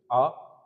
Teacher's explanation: आ बिल्कुल है, विवृत है, जिसमें पूरा मुंह खुलता है। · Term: विवृत स्वर